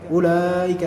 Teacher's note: Maka jangan hiraukan keberadaan waw di sini. Ya, waw di sini waw yang dia tertulis namun tidak sama sekali digunakan dalam pembaca. Nah, sehingga tidak melahirkan adanya mad tabi'i 2 harakat, tidak berharokat, tidak, hanya langsung ulaika.